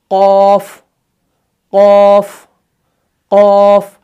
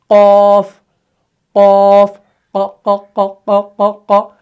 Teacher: जब ये ज़ुबान का पिछला वाला हिस्सा उठकर ऊपर के नरम तालू से लग जाता है तब जाके जो है कौफ अदा होता है